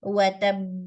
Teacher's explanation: you stress and you open your lips for the qalqala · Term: strongest